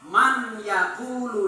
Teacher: Man yaqulu dibaca maka nun sukun bertemu ya niki langsung nunnya bersifat idgham